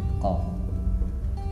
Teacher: Huruf qaf tempat keluarnya adalah pangkal lidah bertemu dengan langit lunak bagian belakang. Jadi lidah bagian belakang disentuhkan dengan langit-langit lunak.